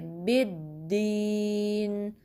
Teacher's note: با میں یہ جو دال ہے اس میں بھی پہلا ساکن دوسرا متحرک ہے، ٹھیک ہے۔ با کو پہلے دال ساکن سے ملائیں گے پھر کسرہ پڑھیں گے